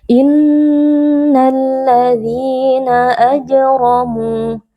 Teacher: Di sini ada mad tabi'i karena ada ya sukun yang sebelumnya berharokat kasroh, dibaca panjang 2 harokat.